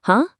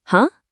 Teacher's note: Your voice dips low and swings high in surprise. Huh? That is your perfect rising tone.